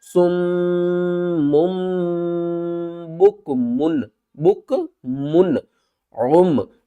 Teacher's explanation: آگے دیکھیں حروف حلقی میں سے عین آ رہا ہے تو ہم یہاں پر اظہار کر کے پڑھیں گے